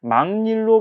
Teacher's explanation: 기역이 이응처럼 비음으로 바뀌는 비음화 현상이 일어났잖아요